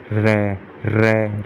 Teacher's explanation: लुंठित व्यंजन मतलब जीभ कंपाती हो। र र मतलब जीभ क्या है, कंपित कर रही है, कंपन कर रही है, तो र क्या हो गया, लुंठित या प्रकंपित व्यंजन।